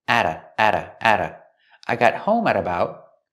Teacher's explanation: The T in at is a fast D because it's between vowels.